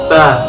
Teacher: Makhorijul huruf ba terletak pada dua perut bibir sebelah dalam